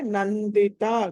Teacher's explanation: నందిత దగ్గర అనుస్వారం ఉంది తర్వాత ద ఉంది కాబట్టి దాన్ని న పలకాలి